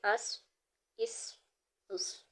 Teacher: صاد حروف مستعلیہ میں سے، اس کو پر کر کے ادا کریں گے